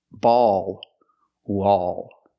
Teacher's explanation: the vowel sound is a plus the dark l